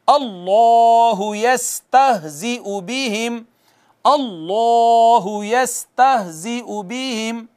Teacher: इसमें जलालत का माकबल अगर मफ्तू हो तो इसको पुर करके पढ़ते हैं, मुफख्खम करके पढ़ते हैं।